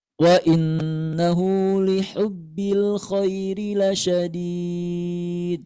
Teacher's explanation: Ha itu suaranya berdesis ya. Ha kecil. Berdesis.